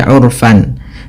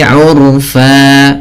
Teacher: Pada lafal terakhir, pada lafal bacaan fan, ketika kita berada di akhir bacaan, ini kita baca dengan bacaan mad iwad, yaitu mengganti fathatain menjadi panjang, sebagaimana mad tabi'i urfa, bukan lagi urfan, tapi urfa, 2 harokat.